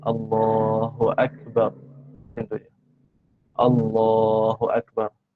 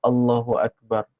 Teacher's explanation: maka bacanya dua harakat Allah dua harakat dan Akbar jangan panjang